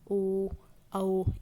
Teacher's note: गले से भी साउंड आ रही है और आपके होठों का भी उपयोग हो रहा है, होंठ भी आपके इसमें गोल गोल घूमते हैं, तो वो हमारे कंठोष्ठ में आ जाते हैं।